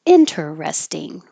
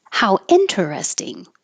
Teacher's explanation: 4 syllables and keeping the T.